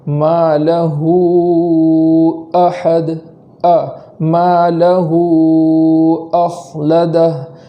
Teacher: اس حمزہ کو خوب جھٹکے کے ساتھ پڑھیں گے تاکہ اس حمزہ کا اچھے سے وجود ہو